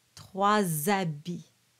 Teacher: So we do that liaison between trois and habits. The H is silent.